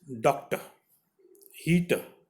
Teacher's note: The last r sound is not pronounced, so it ends with the sound, that is very soft.